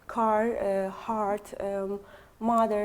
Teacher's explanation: the R sound is always pronounced